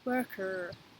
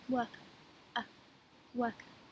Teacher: In American English, the R is pronounced at the end of words. In English, we don't do this.